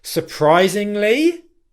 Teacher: I used an upwards intonation on the word surprisingly. And the reason why I did that was because there was more to come in the phrase. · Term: rising tonality